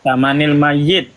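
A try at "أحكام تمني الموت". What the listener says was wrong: Bukan mayit, maut. Pakai wawu bukan pakai ya.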